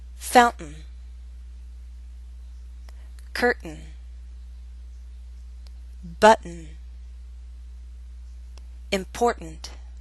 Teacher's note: We use a glottal stop before the sound n. That's an unstressed N sound.